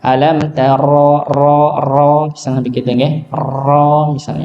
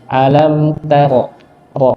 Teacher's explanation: sedikit saja di antara getaran nggih, getarannya cuma sekitar 2 getaran saja. Alam taro ro begitu nggih, jadi jangan terlalu banyak ke getarannya nggih.